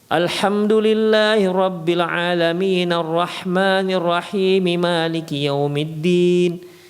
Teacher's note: 3 ayat dibaca dengan satu nafas, disambung.